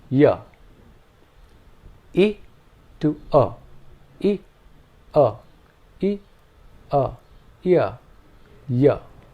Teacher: the transition from E to U gives us the semi vowel y